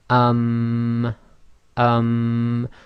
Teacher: you hold the sound in your nose so it's like a small reverberation inside your nasal cavity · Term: nasalization